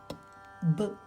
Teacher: When air passes through the mouth and stops at the lips, we can get b. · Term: pure consonants